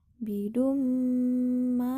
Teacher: terdapat hukum bacaan Mad thaobi'i dibaca panjang dua harakat dengan cara diayun